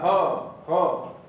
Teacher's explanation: और ह का उच्चारण जो होता है वह स्वर यंत्रीय कहा जाता है, यानी स्वर यंत्र जो यहाँ गले में स्थित होता है वहीं से उसका उच्चारण होता है, ह। तो इसलिए उसको स्वर यंत्रीय कहा जाता है।